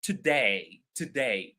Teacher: And day is louder than to